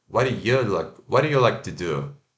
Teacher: E quando é unstressed, né? Quando você está falando ali e você não está dando ênfase nessa palavra, a gente vai fazer o you com o ferradura, né? Então, ó, you, ao invés de you, ou o i rápido e o schwa, ya.